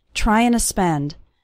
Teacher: the word to just becomes a little uh sound at the end of trying